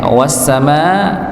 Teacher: Wasama ada alif bertemu dengan hamzah maka sama dipanjangkan empat atau lima lima harakat. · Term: mad wajib